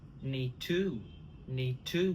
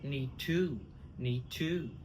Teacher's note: we drop the D of need